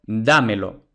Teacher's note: Entonces, ahora, como la sílaba acentuada es la antepenúltima, entonces es esdrújula y ya hemos dicho que las esdrújulas se acentúan ortográficamente siempre, por tanto le ponemos la tilde a dámelo.